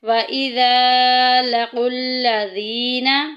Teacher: زال میں سیٹی نہیں کریں گے